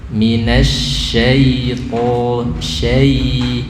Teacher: Minasyaiton syai, lidah tengah. Nah, diangkat tengah lidahnya. Lamnya jangan menekan.